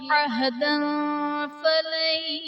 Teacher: عہدا فلن میں دال پر دو زبر کی تنوین، تنوین کے بعد حروف اخفاء میں سے فا ہے تو یہاں پر اخفاء کا قاعدہ ہوگا، یعنی تنوین میں ہم غنہ کر کے پڑھیں گے